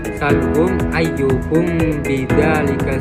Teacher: dinamakan syafawi itu karena makhraj dari huruf mimnya itu, dari huruf mim sukunnya itu berasal dari bibir ketika bertemu dengan huruf ba · huruf mimnya itu ee terdengar seperti seakan-akan itu seperti didengungkan gitu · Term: ifa syafawi